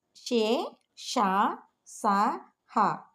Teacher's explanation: గాలి ఊది పలుకబడేవి గనుక ఊష్మములు